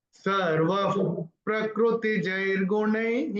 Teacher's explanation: तो ये जो सर्व के बाद जो विसर्ग दिख रहा है उसके बाद का अक्षर है प, तो विसर्ग का उच्चारण होगा फ, फ, जैसे फूक मारते हो